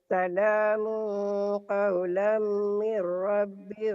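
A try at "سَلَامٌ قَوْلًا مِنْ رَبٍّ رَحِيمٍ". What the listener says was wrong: situ orang banyak yang baca salamun idhar, padahal ikhfa ya, ikhfa yang sangat. Salamu qawlan min rabbir rahim.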